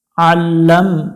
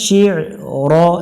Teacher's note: আইন একটু গলা চেপে উচ্চারণ করব